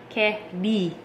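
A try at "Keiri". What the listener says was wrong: Ri. That's a R-I. Because there's no L in Japan. In the Japanese language.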